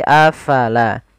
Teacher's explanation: Kemudian pada lafal afala, fa harus alirkan nafasnya. La jangan dibaca apalah, tapi afala.